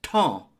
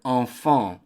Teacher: So you're basically pronouncing the E-M as a nasal sound, and it's the exact same sound as in the word enfant.